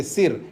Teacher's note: एकम शिरः, संस्कृत में शिरा कहेंगे और हिंदी में हम सिर बोलते हैं, यानी दंत्य सकार का प्रयोग करते